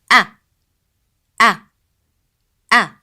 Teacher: The sound of a, as in alif, is pronounced from the lower part of throat.